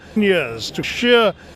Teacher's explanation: manages to say this long diphthong vowel sound, keeping it Indian, but making it perfectly intelligible